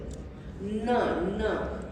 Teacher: Your tongue goes to your palate. It's a palatal sound.